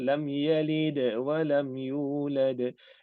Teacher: Yang ada qalqalah pada dal sahaja, lam tak ada.